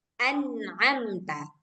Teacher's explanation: Kalau izhar, suara nun sukunnya itu sangat jelas. Nah, jadi memang suara nun sukun itu sendiri yang kedengaran, baru dibaca huruf setelahnya dan tanpa dengung.